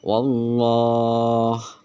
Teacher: Keterangan sebelum lafaz Allah ada huruf berharakat fatkah maka lafaz Allahnya terbaca tebal. Aljalalah atau lam jalalah tafhim.